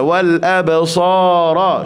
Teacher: ba pun sini qalqalah sughra dalam pertengahan kalimah. Wal absara wa ja'ala lakumus sam'a wal lembut je bunyi.